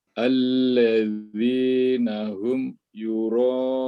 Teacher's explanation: sejajarkan panjang antara ro dengan un ini, Pak. Sama-sama 4 harokat ya.